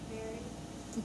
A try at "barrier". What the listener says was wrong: Berry. Don't forget that last syllable. What is it?